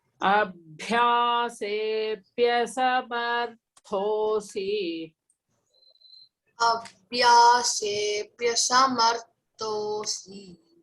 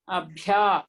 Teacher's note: Bhya is Mahaprana. That is the aspirated one. And you have to emphasize that pronunciation.